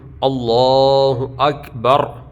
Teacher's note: لفظ اللہ کے نام سے پہلے زبر ہے، اس کو پر پڑھتے ہیں۔ ایسے ہی اکبر، تو وہاں پہ اکبر ہے، را کے اوپر پیش ہے، ملا کے پڑھیں گے تو تب بھی پر، اور اگر وہاں پر وقف کریں گے تو را ساکن ہو جائے گا، را ساکن سے پہلے پیش ہے تو تب بھی اس کو پر پڑھیں گے، یہ آگے آ رہا ہے۔